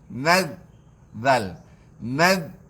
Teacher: Zal, hujung lidah menggigi gigi atas. Zal. Tidak ada safir.